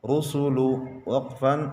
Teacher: را کے اوپر پیش ہے، را کو موٹا پڑھیں گے